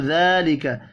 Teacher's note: ذال کھڑی زبر کی وجہ سے ایک الف کے برابر کھینچ کر پڑھیں گے